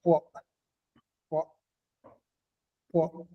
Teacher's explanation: Quand on bloque, on ressent comment ça réagit, la glotte a réagi avant de sortir ce son-là. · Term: son glottal